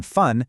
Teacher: For both of these sounds, your top teeth rest gently on your bottom lip. The F in fun is just air hissing through. It's voiceless.